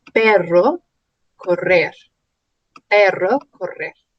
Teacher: La R tiene un sonido vibrante y múltiple en estos casos. Por ejemplo, cuando está entre dos vocales. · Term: R fuerte